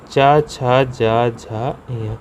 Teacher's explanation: तालु। तालु से उच्चारण स्थान मतलब मुंह के भीतर की छत का पिछला भाग। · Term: चा वर्ग